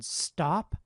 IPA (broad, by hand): stɑp